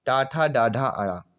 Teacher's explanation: जीभ के पतले भाग या तालु के अगले भाग के स्पर्श से बोले जाने वाले को मूर्धन्य व्यंजन कहते हैं।